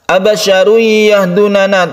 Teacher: tanwin bertemu dengan ya, kita sebut dengan idgham bi gunnah. Kita baca dengan dengung, tasydid ya.